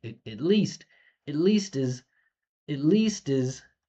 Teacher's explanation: it and is are small reductions. So least stands out